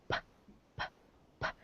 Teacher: so p is unvoiced p is un voiced because the V the vocal cords are relaxed they don't vibrate they're relaxed and they let the air go through